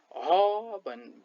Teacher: स्वर यन्त्रको मुख सक्रिय भई उच्चारित हुने वर्णलाई स्वर यन्त्रमुखी अथवा अतिकण्ठ्य व्यञ्जन वर्ण भनिन्छ